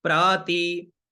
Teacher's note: तो ती में बीच का स्वर है तो प्र ऊपर और ती बीच में